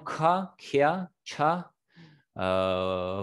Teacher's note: высокий тон с придыханием